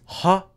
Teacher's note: The <h> sound is voiced /ɦ/